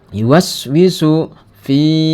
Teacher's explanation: ini Mad Thobi'i karena ada kasroh bertemu dengan ya mati ya dibaca panjang dua harakat